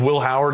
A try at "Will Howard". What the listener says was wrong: In Pittsburgh, they say Will Howard. it's just one syllable.